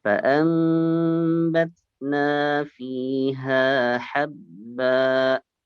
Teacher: Habba. Agak panjang ya. Jangan seperti bunyi ada hamzah di akhir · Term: dua harokat